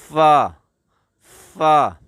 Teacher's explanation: اوپر کے جو 2 دان ہیں، اس کا کنارہ جب آپ کے ہونٹوں کے نیچے والے تر والے اندرونی حصے کو لگے تو اس وقت یہ فا ادا ہوتا ہے